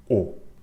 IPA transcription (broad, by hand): o